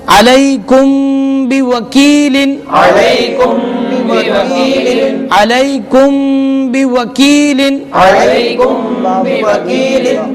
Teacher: میم ساکن کے بعد با ہے تو اس لیے اخفاء شفوی کہیں گے